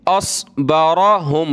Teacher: साद की जगह सीन नहीं पढ़ना आपने